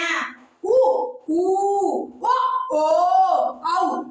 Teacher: உ ஊ வ ஓ ஔ ஆகிய ஐந்தும் வாய் திறக்கும் முயற்சியுடன் இதழ்களை குவிப்பதால் பிறக்கின்றன.